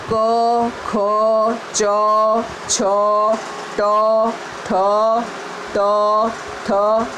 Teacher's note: નાદતંત્રીઓ મહદ અંશે અલ્પ માત્રા અકંપ અવસ્થામાં કંપે ને જે ધ્વનિ ઉત્પન્ન થાય તે અઘોષ ધ્વનિ કહે છે.